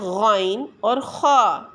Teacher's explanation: Number 4 پر آ جاتا ہے غین اور خا، یعنی حلق کے شروع سے جو منہ کی طرف ہے، یعنی ابتدائے حلق والا حصہ۔